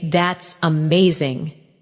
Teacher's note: When you say that's amazing, your tone rises with excitement. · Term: Intonation, rising tone